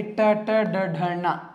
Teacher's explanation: ಮೂರ್ಧನ್ಯ ಅಂದ್ರೆ ನಾಲಿಗೆಯ ಮೇಲ್ಭಾಗದಲ್ಲಿ ಹುಟ್ಟತಕ್ಕಂತಹ ಅಕ್ಷರಗಳು